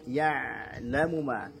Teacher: Ain punya sifat tawassut, alirkan sedikit bunyi ainnya.